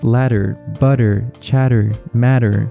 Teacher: the sound that the D and T make in the middle of those words may sound like a d to your English ears but they're actually the alular tap sound exactly the same sound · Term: alveolar tap R sound